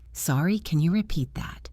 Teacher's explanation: saying it politely with a rising voice at the end